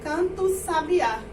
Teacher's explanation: Praticamente nem sai o som do A, sai só do O